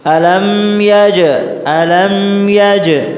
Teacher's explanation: Qalqalah namun dia pantulannya lebih cepat dan sedikit, tidak terlalu jelas. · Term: Qalqalah syughra